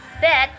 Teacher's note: Kata bet diawali dengan bunyi be yang bersuara